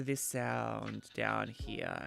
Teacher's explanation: that gravelly texture at the bottom of the vocal cord that's called vocal fry